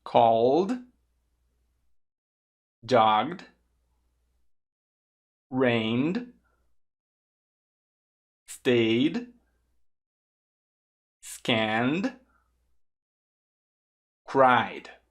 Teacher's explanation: Se você observar, o som da letra não vozeada puxa o T e o som da letra vozeada puxa o D automaticamente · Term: som do D